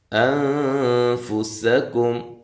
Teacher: ہے، مع الغنہ باریک اخفا ہے، کاف کو باریک پڑھنا ہے، سین کو باریک سیٹی سے